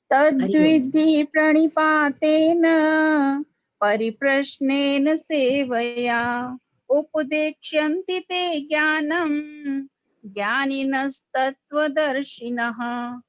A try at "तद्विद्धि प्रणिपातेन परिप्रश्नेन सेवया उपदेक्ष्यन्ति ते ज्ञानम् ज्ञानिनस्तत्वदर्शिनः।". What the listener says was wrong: हाँ जी बिल्कुल ठीक है।